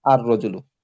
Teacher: এখানে লাম সাকিনটা কিন্তু আর পড়া হচ্ছে না, সরাসরি র কে পড়া হইতেছে দুইবার। যেটা একবার ছিল সেটাকে দুইবার পড়া হচ্ছে আর রজুলু তাসদিদ দি।